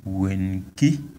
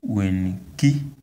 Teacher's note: See, the tone is on the last vowel, E.